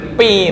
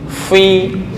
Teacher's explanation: Ini gigi bawah dengan bibir bawah dengan gigi atas. Fi bukan dua bibir, kalau dua bibir pi malah.